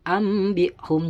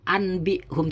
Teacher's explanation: Ambihum, ketika nun mati bertemu dengan ba, maka nun mati atau tanwin tersebut diganti suaranya mim sukun · Apabila ada nun sukun atau tanwin bertemu dengan huruf ba, maka wajib dibaca iklab, di mana bunyi nun sukun yaitu nun mati ya atau tanwin diganti dengan bunyi mim, diganti seakan-akan seperti bunyi mim sukun.